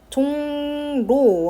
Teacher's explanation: 리을이 니은으로 바뀌죠 뒤에 거가 바뀌었어요